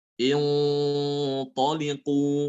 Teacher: gunanya ikut tebal karena to termasuk huruf yang tebal